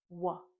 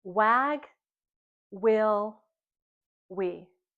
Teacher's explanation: And when we make the W sound, our lips are round. We know that our tongue's at the bottom.